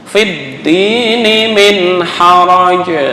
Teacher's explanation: Dal ada tasjid, bukan fidin. Kalau fidin seolah-olah tasjidnya hilang.